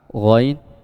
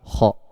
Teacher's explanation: Dan letak dua huruf ini, letak makhrajnya itu berada di adnal halqi, yaitu paling ujung, paling atas, paling ujung tenggorokan